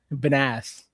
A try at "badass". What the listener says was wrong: Why are you putting the wrong emphasis on the wrong syllable?